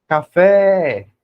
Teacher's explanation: o fé saiu mais forte e mais demorado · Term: sílaba tônica